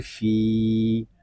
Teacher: فا یا زیر فی، فا کو ایک الف تک کھینچ کر پڑھیں گے کیونکہ یہاں پہ یا مدہ ہو رہا ہے